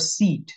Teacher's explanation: this one is the full e sound we'll put a colon at the end because colon shows you that it's a long vowel